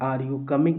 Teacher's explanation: Rising intonation is used in yes or no question